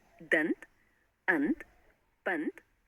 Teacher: अनुस्वार, इसे वर्णमाला में अ के ऊपर बिंदु लगाकर अंग के रूप में दिखाया जाता है। इसमें पहले स्वर का उच्चारण होता है और बाद में नासिक्य ध्वनि का